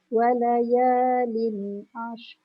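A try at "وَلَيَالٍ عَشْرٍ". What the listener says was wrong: Tak bunyi dah ra dia. Walayalin ashr. Tolak shin kepada ra.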